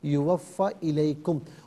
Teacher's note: پھر آپ نے یوفا، فا کو ذرا کھینچا، فا پر فقط زبر، اس کو نہیں کھینچا جائے گا۔ یوفا الیکم، اور علیکم نہیں ہے، الیکم۔